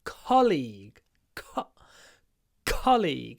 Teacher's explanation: the stress is on the first syllable it's a CO League colleague because the second syllable is longer